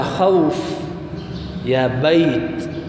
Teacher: ویلی شي نرمۍ ته لین څه ته وایي نرمۍ ته نو دا حروف د خپل مخرج نه بامتداد ولین په نرمۍ سره او لږ شان راښکلو سره ادا کېږي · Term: حروف لین